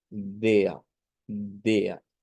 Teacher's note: se va a pronunciar como DEA DEA en donde decíamos que la r se vuelve una a centralizada una eh con la lengua hacia el centro de la parte